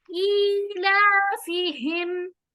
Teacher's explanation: ई अलिफ के नीचे खड़ी जेर है, तो आवाज को थोड़ा सा लंबा करें